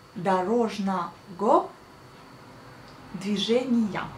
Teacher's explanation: on écrit le G O à la fin, mais on prononce le V A à la fin. Et on prononce les A au lieu des O quand on le dit à haute voix.